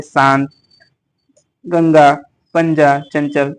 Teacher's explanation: अनुस्वार जैसे चंद्रबिंदी जो होता है, चंद्रबिंदी ऊपर, यह स्वर के बाद आने वाला, सॉरी चंद्रबिंदी नहीं, बिंदी, सिर्फ बिंदी। यह स्वर के बाद आने वाला व्यंजन है, इसकी ध्वनि नाक से निकलती है